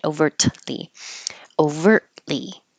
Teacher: pronunciation practice on Tuesday November 28th and we started with overtly you won't hear the T because your tongue goes to the T position overtly and you hold it there and make the L without moving it